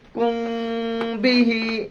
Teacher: নাকের ভিতর লুকাইয়া গুন্না করিয়া পড়া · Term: ইখফায়ে শাফাবী